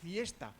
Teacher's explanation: Los dientes son muy importantes porque la F es labiodental, porque pone los dientes superiores sobre el labio inferior.